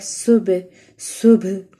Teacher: سین جو ہے حروف صفیریہ میں سے ہے، اس کو ہم نے سیٹی کی آواز میں پڑھنا ہے. با جو ہے با حروف قلقلہ میں سے ہے اور کمزور قلقلہ ہوگا